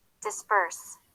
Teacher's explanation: the P unvoiced often sounds more like a voiced consonant the B when it's in the middle of a word